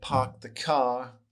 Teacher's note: no real r sound just pretend it's almost replaced with maybe an h